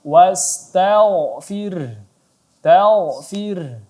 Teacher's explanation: Ya, sebagaimana kita ketahui, huruf ghain kalau sebelumnya dia berbaris, sebelum huruf ghain ada huruf berbaris fathah maka ghainnya ditebalkan. Ya, kita baca tebal tidak dibaca wastagh, tapi dibaca tebal.